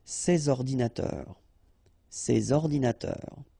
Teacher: you should make the liaison between S and O